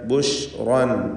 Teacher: ഷീൻ തഫഷി എന്ന അതിൻ്റെ സിഫത്ത് ഷജരിയായ ഹർഫ്. ഷീന് ബുശ്റൻ മലയാളത്തിലെ ഷാ പോലെ മുന്നോട്ടായി പോയത്, കുറച്ച് ഉള്ളിൽ നിന്ന്.